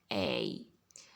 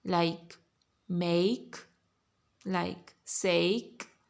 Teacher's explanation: A goes down and then comes up. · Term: diphthong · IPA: /eɪ/